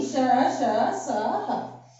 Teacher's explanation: तो इन्हें ऊष्म व्यंजन क्यों कहा जाता है? क्योंकि इनको बोलते समय हमारी श्वास गर्म हो जाती है, इसलिए इन्हें ऊष्म व्यंजन कहा जाता है